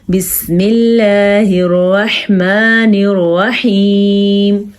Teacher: अल्लाह का नाम बारीक क्योंकि अल्लाह के नाम से पहले ज़ेर है